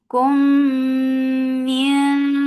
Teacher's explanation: It will get gunna and this gunna is akmal. So keep the sound in your nose for a longer time.